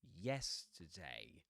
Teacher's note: And the one in the middle is t with a schwa, right? So we've got the dress vowel sound in yes · Three syllable word. Accented syllable, yes. And the one in the middle is t with a schwa, right? · So we've got the dress vowel sound in yes, today. T pronounced with a schwa, and day with a face diphthong